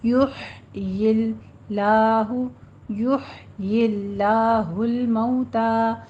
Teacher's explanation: کذالک میں دال کو نرمی سے پڑھنا ہے، فتح قائمہ 2 کاؤنٹ کرنے ہیں. یحیی، یا کے اوپر ضمہ ہے، دونوں ہونٹوں کو گول کیجیے، مجہول نہیں ہونی چاہیے اس کی آواز. ہا وسط حلق میں چلی جائے گی